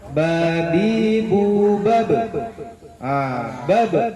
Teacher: ketika ba-nya sukun atau mati ada pantulan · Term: qalqalah